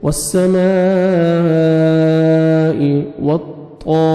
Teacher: طا کو موٹا کر کے پڑھیں گے، الف مد ہے 1 سیکنڈ آپ نے طا کو کھینچنا بھی ہے، را کے نیچے کسرہ ہے، را کو باریک کر کے پڑھنا ہے۔